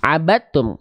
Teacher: Huruf dalnya dimasukkan, dileburkan ke huruf ta. Nama hukum tajwidnya idgham mutajanisain. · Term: idgham mutajanisain shaghir